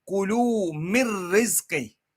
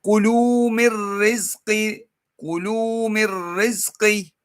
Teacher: You don't say mir rizqi because then you have some nasal sound coming out. There should be no nasal sound at all.